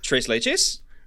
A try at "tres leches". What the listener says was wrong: why are you saying lay Chase